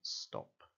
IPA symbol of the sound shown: t